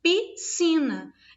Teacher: Esse SC aqui ele não é aparente no som, não é sonorizado, porque não há fonema em S e C, apenas um fonema, o som de S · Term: dígrafo